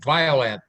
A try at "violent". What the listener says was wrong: Yeah, it's not the violet, it's violent.